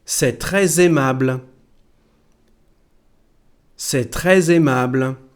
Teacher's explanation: So we have a liaison here between très and aimable